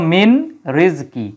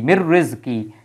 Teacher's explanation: তাহলে মিন মানে হতে, আর যেহেতু নুন সাকিনের পরে যদি র থাকে, হ্যাঁ, এই যে নুন সাকিনের পরে যদি র থাকে তাহলে সূত্রানুসারে সেটা কি ইদগাম হয়ে যায়, তখন নুনের উচ্চারণ হয় না, উচ্চারণ না হয়ে র এর উচ্চারণ হয়, এর উপর একটা তাসদিদ চলে আসে। এই জন্য কিন্তু মিন রিজকি, কিন্তু আমরা পড়ি কি মির রিজকি, একবারে চলে যায়।